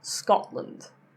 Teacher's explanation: So first of all, if a T ends a syllable and the next sound after that is a consonant, it tends to be a glottal stop · There was no T in what I just said.